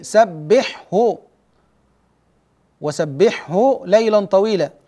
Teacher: باظهار الحاء قبل الهاء في قوله سبحه